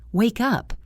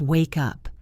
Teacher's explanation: The sound at the end of wake moves over and attaches itself to the up. It sounds like one single word, wake up.